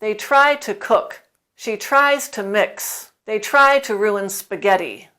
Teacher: And note the intonation. The emphasis is on try.